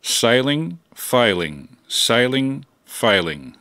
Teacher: the burst of high frequency sound that distinguishes s in sailing from the f in failing